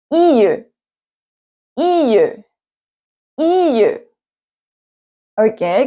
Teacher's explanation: se va acercando tanto la lengua como con el paladar sin embargo solo se acercan porque no obstruyen la salida del aire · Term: las aproximantes